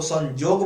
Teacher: य का उच्चारण नागपुरी भाषा में ज हो जाता है।